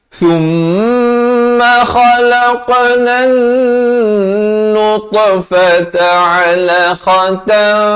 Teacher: Jadi huruf alif ini, huruf hamzah wasal, huruf lam, tiga huruf tersebut tidak ada pada bacaan, hanya ada pada tulisan.